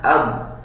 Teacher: Secara pengucapan ba itu atau bisa dikasih bantuan hamzah sebelumnya ab, mati suara, maka disifatilah dia dengan sifat syiddah atau terhenti suara.